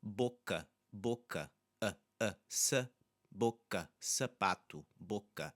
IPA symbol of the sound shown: ɐ